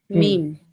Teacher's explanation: মিম হচ্ছে দুই ঠোঁট শুকনো অংশ একসঙ্গে লাগিয়ে